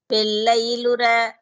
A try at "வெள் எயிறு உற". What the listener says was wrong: வெள்எயிறு வெள்எயிறு உற வெள்ளையிரு உற எயில் இல்ல எயிறு